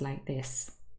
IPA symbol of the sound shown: ə